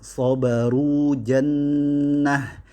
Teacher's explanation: Nah, itu membuat huruf di bawahnya itu tidak dianggap, yaitu alif, sedangkan wawnya itu tetap berlaku. Ya, dia itu waw maddiyah yang memanjangkan huruf sebelumnya yang berbaris dhammah, sehingga sabaru tetap dibaca panjang.